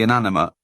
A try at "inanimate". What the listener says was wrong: I didn't hear the T at the end.